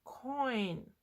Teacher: You don't hear o or e in this. You hear o and then you're going to e. Coin. Because the sound of o is stronger and the sound of I is weaker. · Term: diphthong